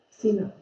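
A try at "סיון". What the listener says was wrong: Sivan. it's a V.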